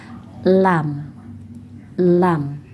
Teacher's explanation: Tepi sisi sisi lidah yang di ujung yang arah punggung yang di arah punggung. Sisi lidah arah punggung menyentuh langit-langit atas dekat gusi. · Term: huruf lam